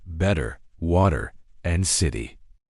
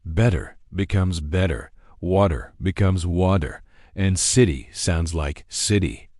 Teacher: In British English, especially in the South, we love a crisp, clear T sound. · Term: crisp British tea